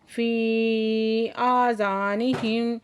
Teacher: ये मद्दे मुनफसिल है, 4 से 5 हरकत खींचेंगे